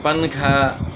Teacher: پنکھا جب ہم پڑھتے ہیں، پنکھا نہیں پڑھتے، لکھنے میں تو پنکھا لکھا جاتا ہے لیکن نون چھپ جاتا ہے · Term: اخفا